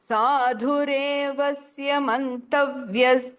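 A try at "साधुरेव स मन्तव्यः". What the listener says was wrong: சாதுரேவ்யன்னு வந்தது, சாதுரேவ தான் அது. சாதுரேவ சமந்தவ்ய. சாதுரேவ்யச வியன்னு வந்தது, வர்க்கு பதிலா விய.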